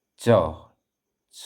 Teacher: च, च, कहाँ जा रहा है जीभ आपकी? तालू पर जा रही है।